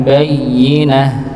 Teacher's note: tak marbutah ketika wakaf maka berubah menjadi huruf ha